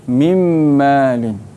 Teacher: Nun mati bertemu dengan mim. Mim kena baca dengan dengung.